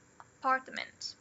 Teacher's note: a gente tem o schwa aqui na primeira e o schwa na terceira. Fica apartment. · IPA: /əˈpɑː(r)tmənt/